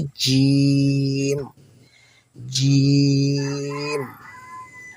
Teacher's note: জিহ্বার মধ্যখানটা একটু তালুর সাথে লাগিয়ে শক্তভাবে বলতে হবে